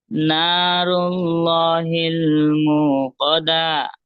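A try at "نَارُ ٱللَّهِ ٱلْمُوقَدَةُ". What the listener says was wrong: হায়ের উচ্চারণ হচ্ছে না এখানে। আয়াতের শেষেই কিন্তু হা আছে, যে গোলতাতে অক্ষ করলে হা হয়ে যায়। তো এরকম হায়ের উচ্চারণটা একটু স্পষ্ট হবে, যেমন নারুল্লাহিল মুকাদ্দাহ, দাল হা জবর দাহ, এরকম ভাবে।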